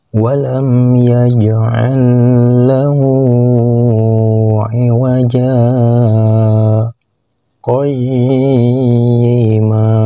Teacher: Yang ditunjuk dengan anak panah yang berwarna putih, ini adalah huruf jim yang berbaris tanwin fathah menghadapi huruf alif mati, maka dibaca wajah. Huruf ja-nya dibaca panjang, panjang bacanya 2 harkat karena menjadi mad iwad, lalu berhenti membacanya sejenak atau 1 ketukan tanpa melepaskan napas karena ada tanda saktah · Huruf ja-nya dibaca panjang, panjang bacanya 2 harkat karena menjadi mad iwad, lalu berhenti membacanya sejenak atau 1 ketukan tanpa melepaskan napas karena ada tanda saktah, lalu melanjutkan bacaan berikutnya yang ditunjuk dengan anak panah yang berwarna hitam.